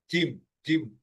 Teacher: প্রথম থেকে হাফ পর্যন্ত মাড়ির উপরে লেগে যাবে এবং বাতাস বেরোবে না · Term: জিমের মাখরাজ